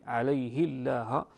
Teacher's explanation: بكسر الهاء من لفظ عليه مع ترقيق اللام من لفظ الجلاله